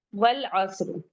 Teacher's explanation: والعصر، واو کو جلدی پڑھیں گے، لام کو ہم پڑھ رہے ہیں کیونکہ عین قمری سے ہے۔ والعصر، صاد پہ ہمس کا فائدہ ہو رہا ہے، ہلانا نہیں ہے، اچھے سے اپنی آواز کو پستی کے ساتھ پڑھنا ہے، سانس ہماری کیری آن رہے گی، اور رو پہ وقف کریں گے تو رو کو ہیوی پڑھیں گے۔